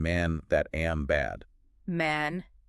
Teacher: It's that flat, almost nasal sound. It feels very frontal right behind my teeth. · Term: the ash